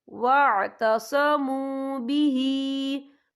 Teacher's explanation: आमनू बिल्लाहि वअतसमू बिही, या देखिए वअतसमू, यहाँ पे वाव मदा हो रहा है, वाव साकिन है, वाव साकिन से पहले पेश है तो हम यहाँ 2 या 3 हरकत के बराबर खींच के पढ़ेंगे। और आगे देखें बिही, हा के नीचे खड़ी ज़ेर है तो यहाँ भी 2 या 3 हरकत के बराबर खींच कर पढ़ा जाएगा।